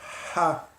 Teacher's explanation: Que você expira o ar da garganta, um ar quente. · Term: som de expirado